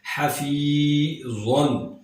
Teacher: زو حروف مستعلیہ میں سے ہے، یعنی اس کو موٹا کر کے پڑھا جائے گا